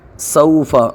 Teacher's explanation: سوف جلدی پڑھیں گے، واولین ہے